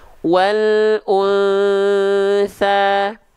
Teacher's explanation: dibaca samar dan dengung dengungnya harus ditahan dua harakat kadar gunah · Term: ikhfa Hakiki